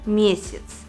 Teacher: Безударное «я», так же как и безударное «е», произносится «и». В слове «месяц» на месте буквы «я» мы говорим и слышим звук «и», так как второй слог безударный